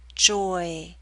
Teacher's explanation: you're moving more towards E at the end, so you're pulling your lips outward. Not into a full spread E, but close.